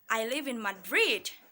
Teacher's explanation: So the word Madrid, we read it with a rising tone intonation.